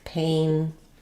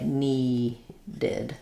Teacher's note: So when a word ends with a T or a D, like paint or need, then as we add the ED, we do say the D sound at the end, and we add a full syllable